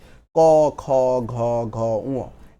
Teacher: তাহলে ক বর্গীয় ক, খ, ঘ, ঘ, গ এটা দেখেন জিহ্বার একদম পিছনের দিক থেকে উচ্চারণ করতেছি। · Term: জিহ্বা মূল